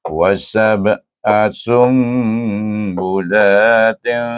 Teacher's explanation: Di sini ada satu hukum nun sakinah bertemu dengan huruf ba. Dibaca dengan iqlab dengan dengung dua harakat.